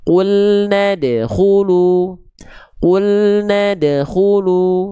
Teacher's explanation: Qalqalahnya qalqalah sughro. Qalqalah yang dia dipantulkan dengan cara yang ringan saja ya. Pantulan yang ringan, pantulan yang kecil. Jadi jangan sampai terlalu kuat.